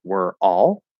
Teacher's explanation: the er vowel it's going to start as a vowel but then it's going to activate into a consonant and connect over